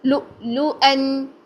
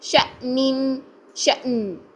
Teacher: حمزہ اگر ساکن حالت میں ہو تو ہم اس کی آواز کو جھٹکے کے ساتھ بند کر دیتے ہیں ، لو یوں کر کے، لو لو ان، ٹھیک ہے، پھر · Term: حمزہ ساکن